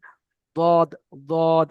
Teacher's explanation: হ্যাঁ, হ্যাঁ, বাংলাতে মানে জদ লেখা রয়েছে, কিন্তু এটার বিষয় হচ্ছে যে আপনি যদি এর উচ্চারণটা জদ এবং দদের বীজখান থেকে হয়, যেটা মানে জিভের সাইডের কিনারা এবং সাইডের দাঁতের মানে গোড়ার সঙ্গে লাগিয়ে উচ্চারণ হয়